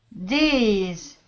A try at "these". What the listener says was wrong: Okay, give me a good TH sound. These. These.